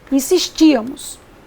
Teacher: A tônica é a ti, ou seja, a antepenúltima sílaba. E por ser uma proparoxítona, vamos acentuá-la.